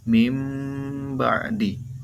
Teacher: sekalian hukum nun sukun dan tanwin itu adalah iqllab Itul ubah suara Nun atau tanwin menjadi huruf mim jadi nunnya hilang berubah menjadi huruf mim